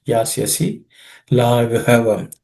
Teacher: This gha is an aspirated gha